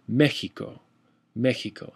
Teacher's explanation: that's typically how you'll see X used as a H kind of a sound